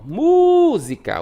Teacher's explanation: O mu demora mais.